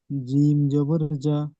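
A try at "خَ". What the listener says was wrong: জিম নয়, খ। উপরে নক্তা আছে, নিচে নক্তা হলে জিম হয়, উপরে নক্তা খ।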